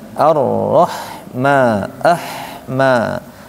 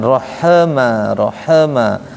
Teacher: Ha di sini sukun dia mengalir jadi bacanya arahma